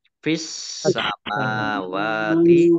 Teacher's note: as-samawati alif lam syamsiyah karena tidak dibaca langsung masuk ke huruf berikutnya yaitu sin, ditandai sinnya ada tasdidnya, sinnya dibaca double.